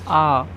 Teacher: आ बोलने में मुख पूरा खुलता है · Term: विवृत